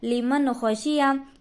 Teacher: नून साकिन के बाद हुर्फ़ हल्की में से ख्वा है, इसीलिए नून की आवाज़ को ज़ाहिर करके, नून साकिन की आवाज़ को ज़ाहिर करके बग़ैर गुन्ने के जल्द पढ़ेंगे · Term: इजहार